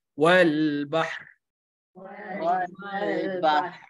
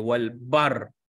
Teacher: Ha dia yang datang dulu, ha mati, baru kita datang ke bunyi ra yang mati tu, bunyi getaran ra tu.